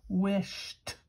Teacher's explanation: Doesn't sound like d. It sounds like t. · the base word doesn't end with T or D. It ends with sh, and it makes the sound t at the end of that word.